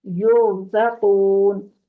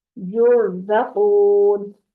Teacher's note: रा साकिन से पीछे या है, या के ऊपर पेश है, तो इसको हम रा को मोटा पढ़ेंगे